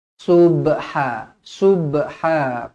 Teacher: Subha, subha, qalqalah sughra, dibaca melantun.